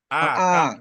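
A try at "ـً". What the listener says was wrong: bukan a kalau dua jadinya an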